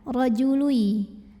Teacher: tanwin dhammahnya masukkan ke ya, leburkan, rajului, dan dengungkan, tahan. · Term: idgham bi gunnah